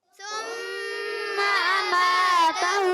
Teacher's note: اماتہ میں میم الف زبر ما، یہ علی مدہ، تا پر زبر ہے نہیں کھینچیں گے، ہا پر الٹا پیش ہے اس کو کھینچیں گے